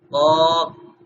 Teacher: زبان ذرا لگ وہیں پہ پیچھے رہی ہے لیکن تھوڑا سختی سے لگ رہی ہے کیونکہ اس کو ہم موٹا کریں گے